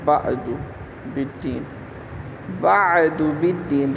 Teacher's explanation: درمیان حلق سے عین کے مخرج سے عین کی ادائیگی کریں گے